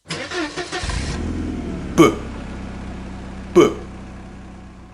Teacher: The b sound is voiced. We turn on our voice. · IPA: /b/